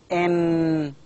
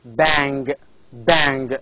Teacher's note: three sounds three main sounds now when the volume is lowered the airstream is allowed to flow out through the nose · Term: nasals